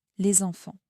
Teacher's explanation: Normalement, le S de les est silencieux. Mais ici, il se prononce parce que enfant commence par une voyelle. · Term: la liaison